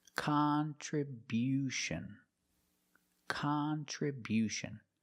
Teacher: We changed the stress to the first and third syllable.